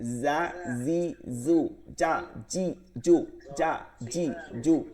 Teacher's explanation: ক্ষেত্রে তাহলে হবে কারণ জিব্বার মধ্যখান তালুতে এটা জিমের মাখরাজ আর জিব্বার আগার দুই দাঁতের আগায় এটা হচ্ছে জায়ের মাখরাজ